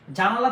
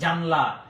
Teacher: জানালা থেকে হয়েছে কি জানলা, এই যে আকার পড়ে গিয়েছে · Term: সরলোপ